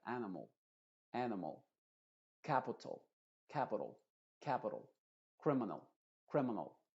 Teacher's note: estás escuchando como que estoy diciendo una o anim no pero no es una o no es animol sino que an m m m es una a pero muy cortita · Lo mismo pasa en palabras que terminan en al, que son muchas en inglés. Esas palabras no se dicen animal con una A bien abierta, sino que con una schwa. Animal. A, que la primera sí se tiene que abrir mucho porque es una A modificada, A, y luego n, mol, mol, animal, mol.